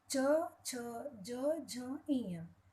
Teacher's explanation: ये जो व्यंजन है यह हमारे मुख में जो सबसे ऊपर वाला भाग है, छत वाला भाग है मुंह का, उसे तालु कहते हैं और जीभ उस तालु को स्पर्श करती है तब इन व्यंजनों का उच्चारण किया जाता है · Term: तालव्य